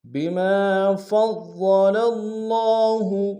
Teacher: فا کو ضاد کے سامنے لانا ہے، ضاد کے اوپر تشدید زور دیں گے، اور ضاد کو موٹا ادا کریں گے